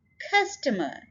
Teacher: Customer three syllable word है और stress हम first syllable के ऊपर डाल रहे हैं